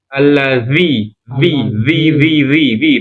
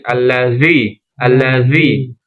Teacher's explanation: Harus ada ee gesekan ujung sama ujung, ujung gigi seri sama ujung lidah dan lidahnya keluar sedikit. Kalau keluar sedikit belum bisa enggak apa-apa banyakin alladzi. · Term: huruf dalal